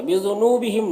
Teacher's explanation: نون میں واو مدہ ہے ایک الف کے برابر کھینچیں گے